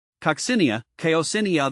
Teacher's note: the emphasis shifts to the second syllable here the the co is pronounced like Co and cot and